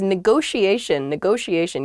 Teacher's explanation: neither T is a hard T. They're both very soft, that sh sound, because they're followed by the I and another vowel, the she a negotiation.